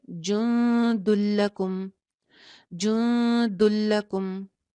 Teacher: جن دلکم، دلکم ہو جائے گا. یہ جن دن جو تھا اس میں نون ختم ہو گیا، نون کی آواز نہیں پڑی جائے گی. دال کی پیش کو لام سے جوڑ دیں گے، جن دلکم، جن دلکم. · جو تنوین کے اندر چھپا ہوا نون ہے وہ ختم ہو جائے گا. ٹھیک ہے، نون نہیں پڑھیں گے اور دال کی ایک پیش کو لام سے جوڑ دیں گے